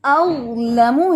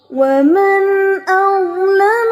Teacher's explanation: زبان کی نوک جو ہے وہ ثنایا علیہ کے کناروں پہ رکھیں گے آپ, تو پیچھے سے زبان مکمل طور پہ اوپر اٹھائیں گے. تو یہ پھر جو اَظْلَمُ ہے وہ یہ موٹی آواز آئے گی.